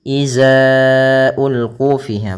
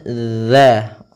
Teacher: Makhrajnya, tempat keluarnya adalah ujung lidah kita, ujung lidah. Ya, ujung lidah menempel dengan gigi seri atas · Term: huruf zal